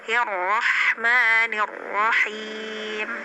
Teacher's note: Jadi nggak bergetar banyak, cukup satu getaran ya. Juga nggak terlalu hilang ya gitu. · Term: takrir